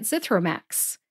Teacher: I personally tend to emphasize zith